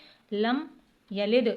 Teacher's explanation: اس میم پر قلقلہ نہیں ہوگا یعنی ٹھہرا کے پڑھنا ہے